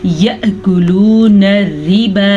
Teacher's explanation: हमने इसको कितना खींचा है, लाम पेश वाव लू, या इधर उल्टा पेश होता तो हम पढ़ते हैं लाम उल्टा पेश लू। वाव मद्दा और उल्टा पेश की मिकदार एक जितनी ही होती है